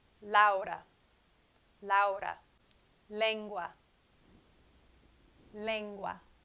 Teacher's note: the l in spanish is very similar to the l in english produced by placing your tongue on the roof of your mouth